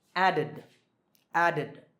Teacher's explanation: the last sound is duh. So the ed ending is pronounced id.